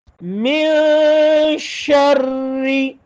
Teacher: شین کے اندر صفت تفشی، آواز کو پھیلائے ، را کے اوپر شد ہے زور لگا کے، شری، یہ